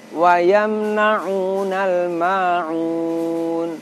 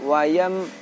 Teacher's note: Wa yamna'una, wa yam, ada dengungnya walaupun sedikit.